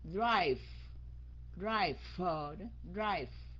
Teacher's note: Cái âm V đó, khi các anh chị muốn phát âm được cái âm V sau đó, các anh chị lấy cái răng trên cắn cái môi dưới rồi đánh cái hơi ra